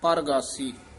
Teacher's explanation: ਰਾਰਾ ਪੂਰਾ ਲਾ ਕੇ ਪ੍ਰਗਾਸੀ ਨਹੀ ਕਹਿਣਾ ਪਰਗਾਸੀ